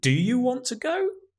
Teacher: Stressing the do, okay? Using the strong form.